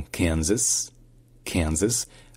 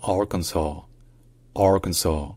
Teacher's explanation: premier S est prononcé comme un Z dans Kansas, Kansas, alors qu'il est prononcé comme un S dans Arkansas, Arkansas. Et enfin, troisième et dernière différence, c'est que le S à la fin, il est prononcé dans Kansas, Kansas, Kansas, alors qu'il n'est pas prononcé dans Arkansas.